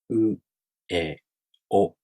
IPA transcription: o